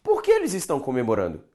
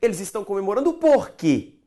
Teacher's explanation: no fim da frase o porque ele fica mais tonico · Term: mais tônico